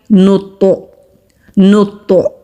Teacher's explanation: یہ جو اینڈ میں ہلکی سی آواز پلٹ کر آ رہی ہے اس کو قلقلہ کہتے ہیں